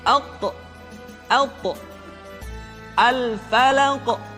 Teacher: qalqalah yang terdengar ketika mengucapkan qaf dan ta terdengar menebal suaranya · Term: al-qalqalah